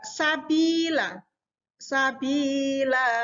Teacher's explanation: Jadi cara membacanya tanwinnya ini dihilangkan. ya. Sabila, sabila, bukan sabilan, bukan. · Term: mat iwat